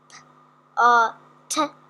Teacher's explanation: It's exactly the same movement, but when you pronounce the top one P uh T, there's no vibration. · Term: unvoiced